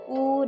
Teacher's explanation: vokal yang dihasilkan oleh gerakan turun naiknya lidah bagian belakang atau Pangkal lidah seperti U dan vokal dibedakan atas empat jenis yaitu vokal tertutup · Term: vokal belakang